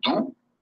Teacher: E quando digo do, na realidade, eu estou fechando, quase como se fosse dar um beijo a alguém.